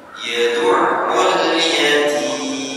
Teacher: yatim ini masuk ke dalam mad 'arid as-sukun panjang, bisa dibaca dua ketukan, empat ketukan, bahkan paling panjang 6